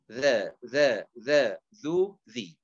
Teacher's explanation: طرف اللسان يلامس أطراف الثنايا العليا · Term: الذال